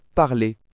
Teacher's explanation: Par exemple, dans « parler », il semble parfois dire « parler », avec une voyelle très légère à la fin, presque imperceptible. Ça change complètement le rythme de la phrase. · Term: voyelles finales